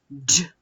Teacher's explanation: Ми чуємо звук дж твердий, приголосний